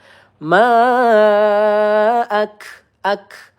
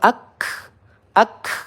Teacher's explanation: Kita panjangkan 4 harokat atau 2 ayunan. Ak kaf sukun ya, sifatnya hamas, di mana ada seperti udara yang keluar